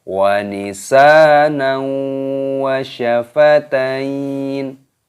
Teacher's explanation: Dipanjangkan huruf sinnya, ada tanda alifnya, matobi'i, 2 ketukan, dan di sini ada huruf nun yang berharokat fathah tanwin yang bertemu dengan huruf wawu, hukumnya dibaca idgham bi gunnah, dimasukkan disertai berdengung.